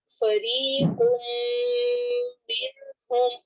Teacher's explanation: تنوین کے بعد میم آ رہا ہے تو یہاں پر ہم ادغام کریں گے اور ادغام غنہ ہوگا. ہم یہاں پہ لمبا کریں گے.